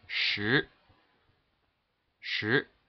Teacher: Second tone is just a rising tone from 3 to 5, and it's pronounced in the number 10, shi.